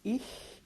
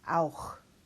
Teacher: I before two consonants, and our Ichlaut again, and then the A-U diphthong with an Achlaut